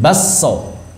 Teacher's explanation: Kafnya idgham ke dalam sin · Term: diidgham